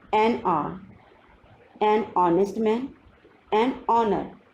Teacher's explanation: If you observe, these words are starting with a consonant H, H, H. But here in these words H is silent and the word is beginning with the vowel sound